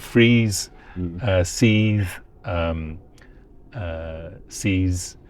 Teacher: E is long before a voiced fricative, or at the end of a word.